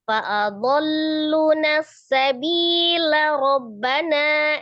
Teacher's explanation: Jadi ya dibaca ketika wasol berarti fa'adalluna sabila Robbana ya. As-sabila Rabbana akan menjadi lanya pendek. Tapi kalau dia berhenti menjadi as-sabila.